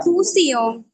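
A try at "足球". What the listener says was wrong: হ্যাঁ আচ্ছা ঠিক আছে, আপনার এই যে শিয়াং এর উচ্চারণটা ঠিক ছিল, এখানে কিন্তু প্রথম সিলেবলের উচ্চারণটা হয় নাই। প্রথমে আপনি এটা বলছিলেন যে পি, হ্যাঁ পি ঠিক আছে, কিন্তু শেষে আই, পি এর সাথে আই এন জি আছে। তো আই এন জি থাকলে হয় ইং। তো এটা হবে যে পিং। আমরা বানান করে ভাবে পড়বো, ঠিক আছে, যে পি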